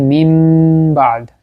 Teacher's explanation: আমরা নুন সাকিন কে মিম বানিয়ে পড়লাম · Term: একলাব